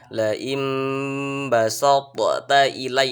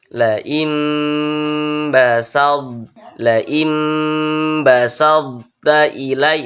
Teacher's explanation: ketika mengucapkan huruf tho itu sifat huruf qalqalahnya dihilangkan nah jangan dipantulkan Jangan dibaca seperti ini laim ilai itu salah itu ada ada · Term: idgham naqis